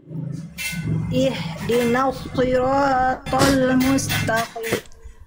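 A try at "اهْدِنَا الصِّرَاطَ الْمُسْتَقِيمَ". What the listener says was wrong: Ihdina. Bunda, huruf nun itu huruf tipis, huruf tebal. Tipis, huruf nun. Nah, jangan nos. Ihdinas siratal mustaqim. Nah, huruf qaf juga jangan qim. Huruf qaf ketika kasroh dia ketebalannya menipis. Taqim, tak juga jangan jadi tebal. Ta. Ta. Mustaqim. Jangan ta. Ta. Ta, tipis.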